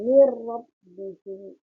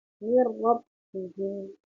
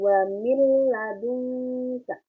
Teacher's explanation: Tadi huruf idgham bilaghunna ada 2, ada lam dan ro. Jadi ketika ada nun sukun bertemu dengan huruf lam dan ro, cara bacanya dimasukkan tapi tanpa dengung